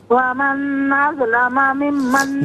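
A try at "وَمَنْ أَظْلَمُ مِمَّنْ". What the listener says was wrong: نہیں، ایک منٹ میری بہن، ومن میں نون پر غنہ نہیں کریں گے، دوسرا اظلمہ نہیں ہے، اظلمو ہے، ومن اظلمو۔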